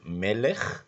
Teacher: The second consonant is a lamet, and below that another short E, and then we have a final kaf, which is pronounced as a ch and not as a k